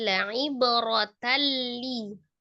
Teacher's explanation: Kalau ini idgham bila gunnah. Idgham ditasdid saja, tetapi tidak disertai dengan dengungnya.